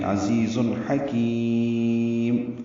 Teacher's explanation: हा वस्ते हलक से निकालेंगे